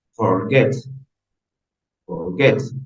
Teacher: tienen la fuerza de voz en la última sílaba